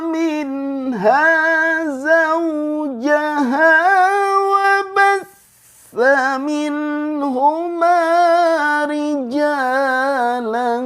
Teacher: Meskipun tidak ada Alif di belakang tetap dibaca Dua harakat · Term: mad Iwat